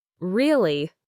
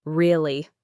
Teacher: If I say it with a rising intonation at the end, really, it's a question. I'm expressing surprise or disbelief.